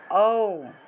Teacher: এটাকে আসলে ওম রূপে উচ্চারণ করতে হয়, অর্থাৎ মুখটা একদম বড় থেকে ছোট হবে